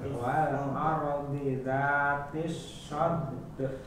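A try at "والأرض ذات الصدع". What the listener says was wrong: Dalnya Bapak pantulkan saja. Ketika memantulkan masuk ke ain. Wal ardi dzatis sad. Tapi ainnya jangan hilang. Sad saja, ainnya hilang. Sad. Jadi ke ain.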